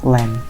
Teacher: So we should let the air stream through the side of our tongue. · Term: liquid